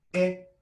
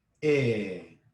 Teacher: All right, so instead of having e, we're going to have e, exactly twice as long as a single vowel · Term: macron